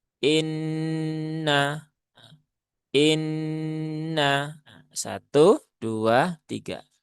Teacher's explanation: Inna e nunnya bertajdid ada gunah musyaddadah. Maka sempurnakan dulu ghunahnya. · ditahan tiga harakat tetapi nunnya cukup satu harakatnya · Ditahan 3 harokat, tetapi nunnya cukup 1 harokatnya. Jadi bukan kemudian keenakan menjadi inna, itu menjadi mat asli, maka itu keliru. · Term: gunnah musyaddadah